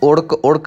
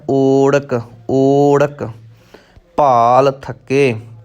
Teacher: ਇਹਨੂੰ ਉੜਕ ਉੜਕ ਨਹੀਂ ਕਹਿਣਾ, ਊੜੇ ਦਾ ਮੂੰਹ ਖੁੱਲ੍ਹਾ ਹੋਇਆ ਹੈ ਤਾਂ ਇਹ ਦੀਰਘ ਮਾਤਰਾ ਹੈ, ਲੰਬੀ ਮਾਤਰਾ ਹੈ, ਲੰਬਾ ਉਚਾਰਨ ਕਰਨਾ ਹੈ